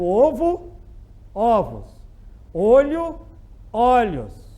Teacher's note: O que é o plural metafônico? Quando eu passo a palavra para o plural, o timbre abre.